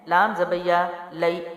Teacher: یا لین ہے، لام زبیہ لئی، نرمی سے جلدی